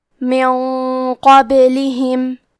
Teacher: کلمت قبلہم میں قاف کی ادائیگی زبان کے جڑ اور تالو کے نرم حصے سے ہے. قاف حروف التفخیم میں سے ہے تو ہم یہ حرف کو موٹی آواز میں پڑھیں گے. · اخفاء کا معنی ہے چھپا دینا، تو ہم نون ساکن کو چھپاتے ہوئے اور غنہ کے ساتھ یہ حکم کو ادا کریں گے. کیونکہ قاف حروف التفخیم میں سے ہے اور غنہ میں اگلے والے حرف کا حکم لیتے ہیں تفخیم میں اور ترقیق میں، تو ہمیں یہ غنہ کو بھاری آواز میں ادا کرنا ہے.